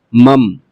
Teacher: نون کی جگہ آپ میم پڑھیں گے، نون نہیں پڑھا جائے گا، میم پڑھا جائے گا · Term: اقلاب